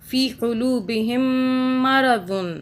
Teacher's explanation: مرض، فی قلوبہم مرض، یہاں پہ میم کے اوپر تشدید ہے، میم کو ہم 2 سیکنڈ کے لیے ناک میں رکھیں گے تشدید کی وجہ سے